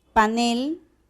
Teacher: panel también es una palabra aguda la última sílaba es tónica